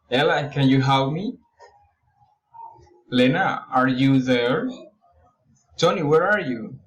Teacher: direct address rising intonation